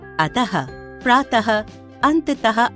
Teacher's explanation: विसर्ग कोलन अहा को विसर्ग कहा जाता है इसका उच्चारण ह की भाति किया जाता है